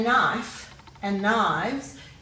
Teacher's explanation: if you say knife and knives you can hear that the f changes to a v